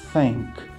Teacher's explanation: Repara que não tem vibração das cordas vocais, ó. Thank. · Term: TH voiceless